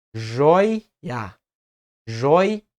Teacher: Então são 2 emissões de voz. Uma para o ditongo e outra para o hiato.